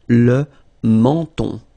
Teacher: So you get two nasal. The first one here, en, and then the second one here, on.